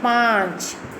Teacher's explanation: अनुनासिक इसे मुंह और नाक से बोला जाता है